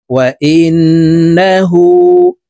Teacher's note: ওয়া ইন, নুন জবর না, হা উল্টা পেশ হু, হরফের উপরে উল্টা পেশ হইলে এক আলিফ টানিয়া পড়িতে হয়, ঠোঁট গোল করে এক আলিফ টেনে পড়ব।